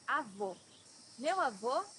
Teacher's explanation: here you have a close o